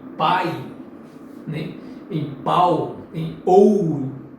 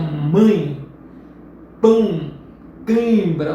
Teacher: Já os ditongos nasais, uma parte do som sai pela boca e outra parte pelo nariz. Nasais, por isso que nasais, porque uma parte do som vai ser expelida pelo nariz para que aquele som seja pronunciado como em mãe.